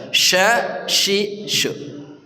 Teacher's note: Am kuntum syuhada'a, syuhada shin tafashi, menyebarnya udara dengan bagus di tengah lidah kita